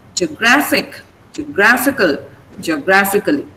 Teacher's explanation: Okay, but the stress remains on GR.